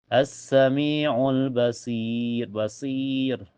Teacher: Setelahnya ada hukum alif lam qamariyah karena alif lam ketemu huruf qamariyah yaitu ba. Cara bacanya alif lamnya terbaca jelas